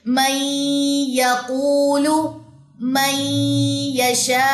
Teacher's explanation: हमने इदगाम नाकिस किया नून की कुछ सिफ्त बाकी रहेगी · جیسے یہاں پہ دیکھیے من یقول، من یشاء، تو یہاں پہ بھی ہم نے ادغام ناقص کیا، نون کی کچھ صفت باقی رہے گی